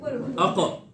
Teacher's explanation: اب قاف میں آواز اوپر اٹھ رہی ہے